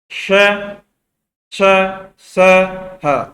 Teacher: इनको बोलते समय उष्मा उत्पन्न होती है, यानी कि वायु टकरा कर निकलती है।